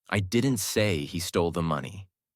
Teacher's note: Stress on say changes the meaning.